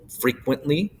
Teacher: stressed unstressed unstressed is what's called a dactyl